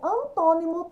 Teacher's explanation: Antônimo, antônimo também tem um acento aqui no tom. Então, é a antepenúltima sílaba. Ela é proparoxítona